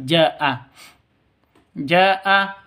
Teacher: kalau Mad bertemu dengan Hamzah di satu kata berarti mad wajib muttasil wajib lima ketukan atau enam ketukan panjangnya